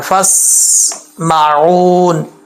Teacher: بعض اوقات لوگ ہوتے ہیں الف بھی پڑھ دیتے ہیں سین کے ساتھ بھی ملا رہے ہوتے ہیں، جیسے فاسمعون، ایسے نہیں پڑھنا، یہ غلط ہو جائے گا۔ فاسمعون، سین میں سیٹی ہے، حروف صفیریہ میں سے ہے، سیٹی والے حروف میں سے، ٹھیک ہے؟ تو سیٹی کے ساتھ پڑھنا ہے، فاسمعون۔